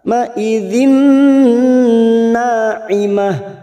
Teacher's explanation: masuk dan mendengung, masuk ke huruf nun dan ditahan selama 3 harakat. Ma idzin na'imah, na fathah diikuti alif 2 harakat. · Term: idgham bi gunnah